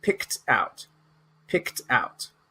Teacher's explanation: So this ED in English makes a T sound